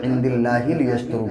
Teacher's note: اس سے پہلے یہ زیر ہے تو اللہ کا لام موٹا نہیں پڑھا جاتا ہے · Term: باریک